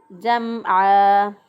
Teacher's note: आइन को हलक से अदा करेंगे, गले के दरमियान से आइन अदा होगा।